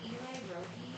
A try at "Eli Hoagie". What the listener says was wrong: Hoagie. It's an H.